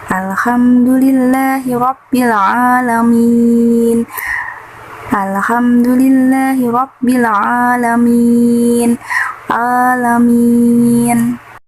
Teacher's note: mad arid li sukun karena mad jatuh sebelum huruf yang diwaqaf. Cara membacanya 2 harokat.